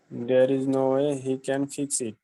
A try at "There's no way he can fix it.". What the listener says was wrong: There এবং ইসটাকে মিলিয়ে ফেলি, there is no way, there's no way, there's no way